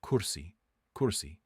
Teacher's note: you'll notice your lips rounding a bit when you say it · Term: dhama